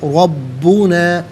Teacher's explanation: را پر زبر ہے، را کو پر کر کے پڑھیں گے، با مشدد ہے، اسے جماؤ کے ساتھ پڑھیں گے